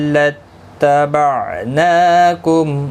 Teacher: نون کے اوپر کھڑی زبر ہے، اس کو کھینچنا ہے ایک الف کی مقدار کے برابر